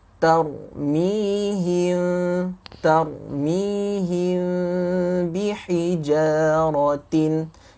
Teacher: Mim mati bertemu ba, kita kata jangan rapat bibir. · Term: ikhfa' syafawi